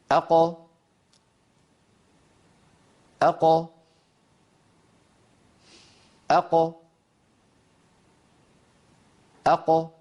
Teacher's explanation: القاف المقلقلة تخرج مع تباعد أقصى اللسان عن الحنك اللحمي